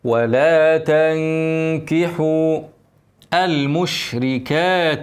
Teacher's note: الشين فيها تفشي ما تستعجلش عليها